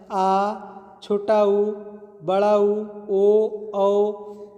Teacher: पश्च स्वर में जो जीभ के पिछले हिस्से से बोला जाए